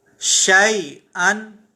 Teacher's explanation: شیئن ہم نے یہاں پر یا کو نہیں کھینچا بلکہ شی نرمی کے ساتھ اسے پڑھا. اس کی وجہ یہ ہے کہ یہاں پر یا لین ہے.